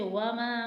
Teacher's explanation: میم الف ماں کے اوپر مد موجود ہے تو اسے 3 حرکت کے برابر کھینچیں گے